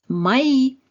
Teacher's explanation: le O non accentué va se prononcer comme un A, ce qui nous donne Maï.